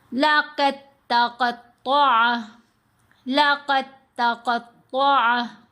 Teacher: اب دال ساکن ہے، تا مشدد ہے، دال کو ہم نے تا کے اندر ہی مرج کرنا ہے۔ اگر ہم علیحدہ پڑھیں تو دال ساکن ہے، پھر تو دال کے اوپر کلکلا ہونا چاہیے، لقد، تو تا کی تشدید پھر کیسے پڑھیں، کس کو ملائیں، اب اس کے ساتھ دال تو ساکن ہو گیا، تو اس لیے دال مرج ہو جاتا ہے، مکس ہو جاتا ہے آگے ہی۔